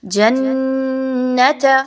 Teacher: جیم اور نون کو ناک میں چھپانا ہے، ناک میں یعنی کہ غنہ کرنا ہے، لیکن کھینچ کے نہیں پڑھنا نون کی ادائیگی کو.